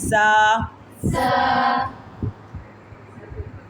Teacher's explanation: زا، زال میں اور زا میں فرق ہے، یہ والی جو زا ہے اس کی سیٹی نکالتے ہیں، یہ سیٹی سے ادا ہوتا ہے۔